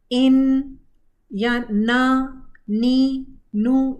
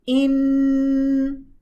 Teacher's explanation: ये तो नाक में से आवाज़ आ रही है क्योंकि मखरज बंद है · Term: नेज़ल साउंड